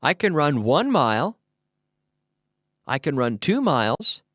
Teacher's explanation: there the emphasis the stress is on one mile two miles